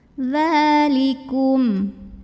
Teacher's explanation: Mil dza mad asli atau mad tabi'i, karena ada baris fathah berdiri di atas huruf dzal, maka dibacanya panjang 2 harokat